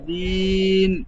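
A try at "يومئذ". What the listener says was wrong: হবে না, লাস্টে যে নুনের মতন বলছেন ইজিন, জিন হবে না, ইজি, জাল ইয়া দুজের জি।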